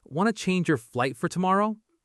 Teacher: She just connected want to into wanna and dropped the do you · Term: connect them